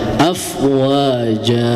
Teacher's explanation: Nah, itu kan dibacanya harusnya ee secara tulisan afwajan ya. Tetapi karena dihukumi dengan mad iwad, maka ee diganti tanwin itu menjadi fathah. Maka dibaca dua harakat.